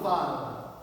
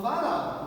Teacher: Então a sílaba tônica da palavra varal é o ral.